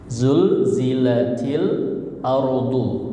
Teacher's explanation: zulnya hati-hati ya. Lamnya jangan mantul